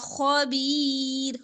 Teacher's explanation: خا موٹا باقی حروف باریک پڑے جائیں گے